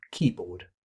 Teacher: Key contains a full vowel and is stressed, but board contains a full vowel and is not stressed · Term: full but unstressed